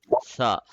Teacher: سا میں زبان کی نوک اوپر کے دانت کے کنارے پہ لگتی ہے